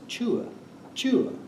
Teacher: So the word for God, I think, is chua, chua, and it goes down.